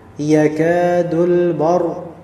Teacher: ra'nya di sini mufakhamah, tebal ya, bar. Ya, jadi jangan bar.